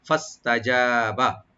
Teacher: তা ওপেন থাকবে, জিম এখানে রাইট দিয়ে ওপেন করে পড়বো, এবং একালিপ টানবো, এখানে বাতে কোনো টান নাই, ওপেন করে পড়বো।